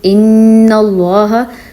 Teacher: ان پہ جو میں رکی ہوں تھوڑا اور اس کو میں ناک میں آواز نکالی ہے، تو یہ ہے غنہ.